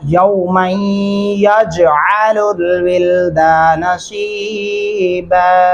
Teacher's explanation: غنہ بھی کریں گے اور جیم پہ قلقلہ ہوگا